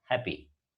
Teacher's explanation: There is a doubling in the spelling, but there is no doubling in the pronunciation.